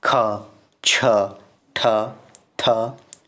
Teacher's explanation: हवा अधिक मात्रा में बाहर निकलती है अल्पप्राण की अपेक्षा में